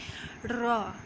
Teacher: زبان کی پشت اور اس کا کنارہ جب ثنایا اور رباعی کے مسوڑوں سے لگے تو یہ حرف ادا ہوتا ہے